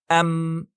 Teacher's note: جب ہم میم پر سکون کے ساتھ ام کہتے ہیں تو دونوں ہونٹوں کے آپس میں ٹکرانے یا ایک دوسرے کو چھونے سے یہ آواز پیدا ہوتی ہے